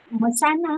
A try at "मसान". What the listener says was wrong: मसाल नहीं, मशान। माँ संदूक वाला सा, उसमें डंडा रहेगा बड़ा का और ना। ना फॉर लैंड। ना ना फॉर